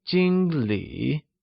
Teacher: Jing uses the first tone also known as the high level tone while Lee uses the third tone also known as the falling · Lee uses the third tone also known as the falling rising tone